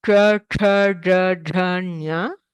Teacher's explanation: the tongue has to move actually backwards to behind where we pronounce the tavarga